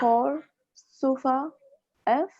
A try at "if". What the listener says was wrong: F no. E sound is there, no?